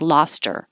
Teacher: get rid of the h the t connects to the er and it sounds like loster she lost her arm and a